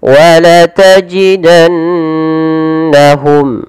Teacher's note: Padahal di sini harus dibaca dengan bacaan yang kita namakan dengan gunnah, yaitu sembari menahan memasukkannya ke rongga hidung